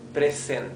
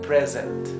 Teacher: se pronuncia con una vibración como si fuera un zumbido de una abeja. O sea, no es present, sino present.